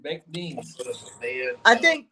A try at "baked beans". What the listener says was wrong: I think Lori's right. He really emphasizes the K. He does say